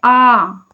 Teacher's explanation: आ का जब हम लोग उच्चारण कर रहे हैं तो मुख हमारा क्या है? पूरी तरीके से खुला है।